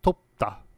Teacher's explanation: Korean has a dental stop as in the word topta. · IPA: [t̪op`t̪*a]